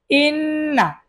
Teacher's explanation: নুনের উপর তাসদিদ গুন্না করা ওয়াজিব